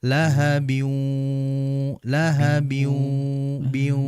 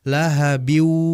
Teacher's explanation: Artinya dengungan biwunya itu masih jelas. Dan dalam membaca idgham di sini ini kan idgham ghunah ya, artinya memasukkan huruf yang kedua disertai dengan ghunah.